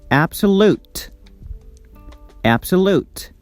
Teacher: The syllable lute is stressed, but it's not tensed or louder. It's soft and shorter. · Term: secondary stress